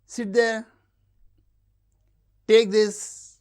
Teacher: Commands and requests with lowrise.